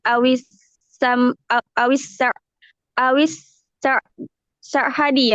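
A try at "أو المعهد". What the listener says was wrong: Mim, awil ma'hadi.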